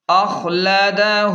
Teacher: الٹا پیش کو 1 الف کے برابر کھینچیں